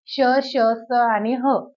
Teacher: ज्या वर्णांचा उच्चार करताना उष्णता बाहेर पडते त्यांना उष्मे असे म्हणतात याच शब्दांना घर्षक सुद्धा असं म्हणतात कारण त्या वर्णांचा उच्चार करताना तोंडात एक घर्षण तयार होतं